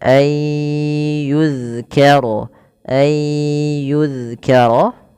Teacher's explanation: Yaitu cara membacanya memasukkan nunnya kepada huruf setelahnya dan huruf setelahnya menjadi tasydid atau dua huruf. Maka ayyu kemudian ditahan dengan ghunah sepanjang dua harakat.